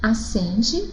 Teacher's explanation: É como se nós tivéssemos o E, som nasal, com o tio, sem o N.